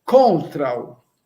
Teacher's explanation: Este U com a braquia é uma vogal, ele é fraquinho, é um som fraquinho, na verdade não é vogal, é uma semivogal. Porque ele tem um som fraquinho de náutico, é um fraquinho.